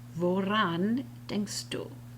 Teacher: I've got two vowels next to each other that I both have to pronounce, and it doesn't come out clearly. So the Germans will insert an R to make it flow